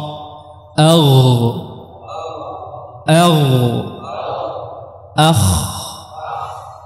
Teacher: akar lidah jadrul lisan bertemu dengan apa sama dengan dinding tengorokan juga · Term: huruf gin dan huruf koho